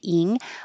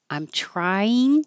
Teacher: instead of the ing, which would be the back of the tongue going very high, ing, I'm changing it to een, which sounds the same, with the tongue in the front for the n.